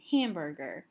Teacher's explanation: So the stress is on this first syllable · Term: stressed